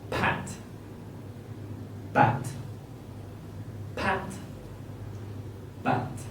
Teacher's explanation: So you put your middle finger in front of your throat, and you can feel your throat vibrate while you make the B sound, but not for P.